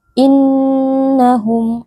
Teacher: munfasil dibaca panjang EMP atau l harakat innahum ada Nun tasdid Nun tasdid wajib dibaca dengan berdengung